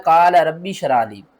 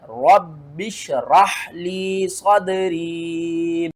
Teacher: ठीक है ना, रब्बी शराली कर जाते हैं। तो आपने सख्ती के साथ पढ़ना है और रा के आगे हा को भी पढ़ना है, रब्बिश राहली सदरी।